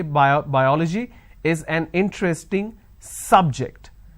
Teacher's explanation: biology is an interesting subject. I'm stressing on the first syllable. So I say biology is an interesting subject.